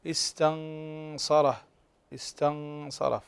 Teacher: النون ساكنة إذا بعدها الصاد، صاد من حروف الإخفاء الحقيقي، استنصره استنصره، فعندنا الراء مفخمة لأنها مفتوحة.